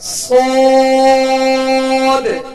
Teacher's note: दोनों दांतों के अंदरूनी किनारे से जबान की नोक जब लगेगी तो ये ज़ सी स् ये तीन हुरूफ अदा होंगे तो स्को अदा करते हुए इसको तुल पढ़ना है मोटा पढ़ना है हुफ मुस्तालिया में से है बगैर होठन गोल किए इसको अदा करना है और सख्ती के साथ यानी सीटी की आवाज इसमें पैदा हो · تو صاد کو ادا کرتے ہوئے اس کو پر پڑھنا ہے، موٹا پڑھنا ہے، حروف مستعلیہ میں سے ہے، بغیر ہونٹ گول کیے اس کو ادا کرنا ہے، اور سختی کے ساتھ یعنی سیٹی کی آواز اس میں پیدا ہو اس طرح ادا کرنا ہے